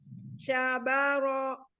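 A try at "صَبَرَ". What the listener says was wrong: Sabar, sa ya, bukan sya. Sa. Sabaro.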